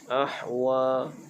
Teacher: Ahwa dibaca dengan ha pedas. Ha ini keluarnya di tengah kerongkong